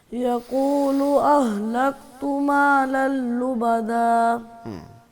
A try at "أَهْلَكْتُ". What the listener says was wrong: کاف کو صحیح پڑھو ذرا دوبارہ. اہلکت.